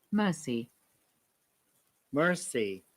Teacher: Then Marcy, according to the American pronunciation, we have to pronounce R, but in the British accent, we do not pronounce R in this case.